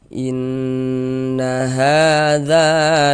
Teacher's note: Ada alif, sebelum alif ada harokat fathah, maka huruf yang memiliki harokat fathah dibaca panjang, sehingga za dibaca panjang. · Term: Mad tabi'i